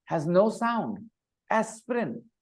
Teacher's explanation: this I between P and R has no sound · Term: silent vowel letters